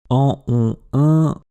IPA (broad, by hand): ɑ̃ ɔ̃ ɛ̃